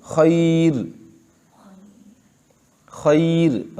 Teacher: جیسے خیر، خیر ہم کیسے پڑھتے ہیں؟ خیر، خیر، را باریک پڑھیں گے اگرچہ یا سے پہلے حرف پر زبر ہے